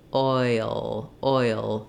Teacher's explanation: it's a dark L which means it has a little bit of a schwa sound before the back of my tongue is down oh in that schwa